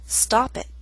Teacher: That's a true T with not much puff of air, and a glottal stop.